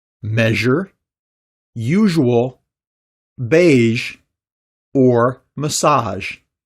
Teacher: your mouth which creates an audible friction speaking about the consonant this sound is made by partially blocking the air flowing between the blade of your tongue and the roof of your mouth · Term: zh sound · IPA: /ʒ/